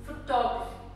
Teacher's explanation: The stress moves on to the second syllable.